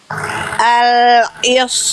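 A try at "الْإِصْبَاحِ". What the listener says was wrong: Oke, itu lebih bagus itu.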